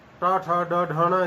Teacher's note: तो मुख में सर्वाधिक ऊंचा स्थान मूर्धा होता है। तो उस मूर्धा स्थान से ऋ ट ठ ड ढ ण र श इन ध्वनियों का उच्चारण किया जाता है, इसलिए मूर्धन्य है ये सारी।